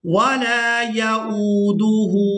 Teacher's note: حمزہ واو پیش او کھینچ کر ادا کریں گے